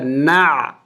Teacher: عین کی آواز کو اچھی طرح ادا کرنا ہے، یہ حروف حلق سے ادا ہوگا، وسط حلق سے